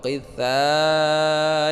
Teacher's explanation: Wa qitha ini panjang 5 harakat, yaitu mad wajib muttasil ya, panjangnya 5 harakat.